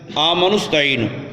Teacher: وہ حمزہ وصلی ہے، ما قبل کے ملانے سے گر جاتا ہے. یا ایھا الذین آمنوا استعینوا پڑھتے ہیں نا، تو تو اصل میں ہے یا ایھا الذین آمنوا استعینوا، ملا کے پڑھیں گے آمنوا استعینوا۔